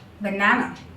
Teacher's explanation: here in the banana, two schwa sound are involved again. That is on the first A and the last.